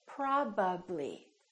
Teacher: when I say probably we have a PBB probably my lips have to open and close three times